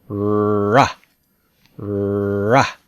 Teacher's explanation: So the sound here has a low F3. That makes it sound a little dark.